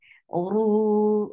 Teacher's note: Oru is heavy and it is 2 counts long. Whenever ra is with dhamma or fatha, it is heavy. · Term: heavy sound of ra